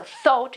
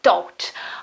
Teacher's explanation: In the first case you have th, so thought. In the last case you have a t sound